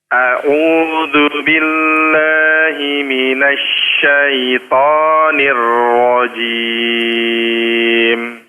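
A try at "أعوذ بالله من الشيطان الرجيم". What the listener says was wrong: Ainnya agak sedikit kurang pas Pak ya, makhrajnya maksudnya. Ainnya au-nya Di situ agak sedikit kurang pas. Kemudian coba di huruf ra, syaitanir ra. Dipertebal lagi.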